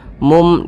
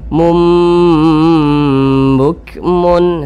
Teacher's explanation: Nah, ini jadinya bunyinya itu dirubah menjadi mim. Jangan mun tapi mum menjadi mim. Mum didengungkan, didengungkan. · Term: iqlab